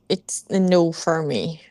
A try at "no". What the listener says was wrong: Foi mais para no do que nu.